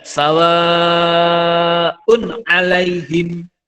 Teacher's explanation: ada tanwin, domatain, ketemu dengan ain, ini dibaca jelas.